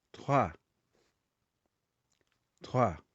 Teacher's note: Aqui, conforme já foi falado, letra R, que fica entre uma consoante e uma vogal, e fica fraco.